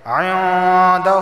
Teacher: عندہ، نون ساکن کے بعد دال آیا ہے، اور دال حروف اخفا میں سے ہے، اخفا والا غنہ ہوگا، یعنی زبان کی نوک اوپر کے تالو سے نہیں لگے گی، اور 1 الف کے برابر ناک سے آواز آئے گی۔